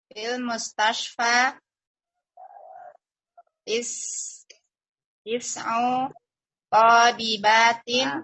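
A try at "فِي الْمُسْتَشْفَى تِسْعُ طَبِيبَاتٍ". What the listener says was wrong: Panjang pendeknya Ibu, salah panjang pendeknya. Toknya pendek.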